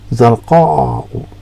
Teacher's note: Like I said, it's known as Alif Mamdudah, and it ends with a Hamza but preceded by an Alif, a long Alif. Okay, and when you pronounce it, it's like a glottal stop, so it's like you've got a hiccup